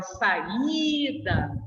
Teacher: eu digo para você que a vogal tônica é o I, que a sílaba tônica é o I